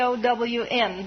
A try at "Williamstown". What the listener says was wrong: what happened to the L's you knocked the L's out of that word